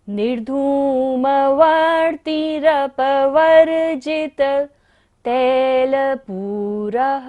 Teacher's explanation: पूरः पर विसर्ग है, इसलिए सांस का विसर्जन करना है